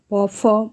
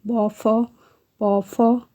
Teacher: फ का उच्चारण स्थान क्या है, तो दंत ओष्ठ